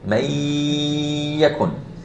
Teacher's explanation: So here I'm saying may yakun. I'm putting emphasis on the ya as if it has a shadda. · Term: idgham